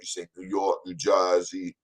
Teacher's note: when you say New York, you got to have that nasal sound